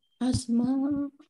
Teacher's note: Mim fathah alif mat tabi'i, tetapi karena bertemu dengan huruf hamzah maka menjadi mat wajib muttasil. Nah, ini dibaca panjang 5 harokat.